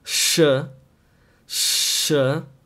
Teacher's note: the air is passing through the front teeth